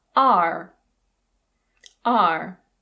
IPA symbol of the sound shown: ər